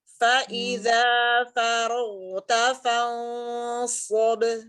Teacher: shod itu isti'la dan itbaq. Pangkal lidahnya naik, sisi lidah juga naik, jadi berbentuk sendok lidah itu